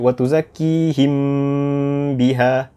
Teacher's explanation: Kita tidak tutup bibir kita apabila kita memasuki huruf ba. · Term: ikhfa syafawi